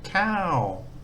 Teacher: this here is the word for rice with a falling tone